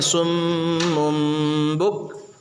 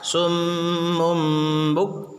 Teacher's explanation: تنوین کے بعد یا نون ساکن کے بعد با آئے تو تنوین اور نون ساکن کو میم سے بدل کر کے غنہ اور اخفا کے ساتھ پڑھیں گے، اور کہیں بھی تنوین یا نون ساکن ہو اور اس کے بعد با ہو تو ایک چھوٹا سا دیکھو ایسا میم لکھا رہتا قرآن میں، دیکھو تم لوگ دکھ رہا ہے چھوٹا سا میم؟ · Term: قلب